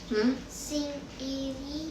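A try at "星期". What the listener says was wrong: Salah, singci. Q itu bacanya ci, singci i.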